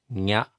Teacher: The N with the tilde on it is what I like to think, similar to Spanish ña. So that's very close to a Y, but it's nasalized.